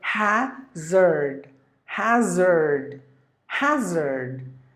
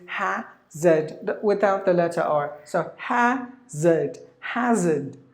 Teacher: if you go to the American way, the letter R is pronounced